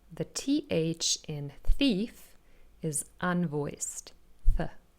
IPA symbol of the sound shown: θ